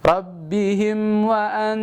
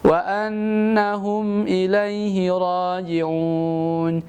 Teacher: di kalimat wa an baru ditahan 3 harakat